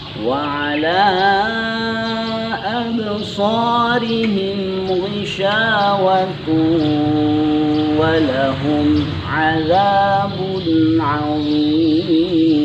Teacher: terdapat hukum idgham bi gunnah, yakni tanwin bertemu dengan huruf waw. Oleh karenanya kita harus memanjangkannya atau menahannya selama 2 ketukan atau 2 harakat